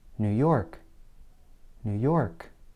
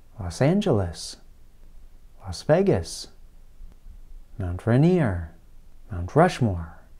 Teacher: in general americans place more stress on the last word of a place name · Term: word stress